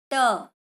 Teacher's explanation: इसका तो मूर्धा है, जीभ आपकी मुड़कर वापस आती है ना, वहां पर लगती है मूर्धा पर।